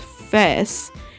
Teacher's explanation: Unique features of Tristan da Cunha English include the non-diphthongization of the vowel of A, such as face is pronounced fess